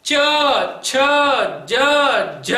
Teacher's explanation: ये मेरी जुबान तालू में चिपक रही है। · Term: तालव्य